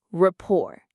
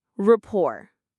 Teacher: The T at the end is silent. We don't say it.